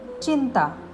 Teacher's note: ह्यामध्ये अनुस्वाराचा उच्चार हलंत न होतो, कारण अनुस्वारानंतर त आले आहे आणि त वर्गातील अनुनासिक व्यंजन न आहे.